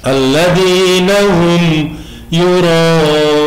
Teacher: Rohnya kita panjangkan. Itu namanya mat wajib. Mat wajib mutasil. Wajib dibaca 6 ketukan.